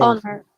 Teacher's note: There is no H sound in honor.